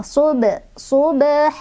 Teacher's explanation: Karena ada huruf qalqalah yaitu ba yang sukunnya sukun asli ya. Dibacanya pantulannya kecil. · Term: qalqalah sughra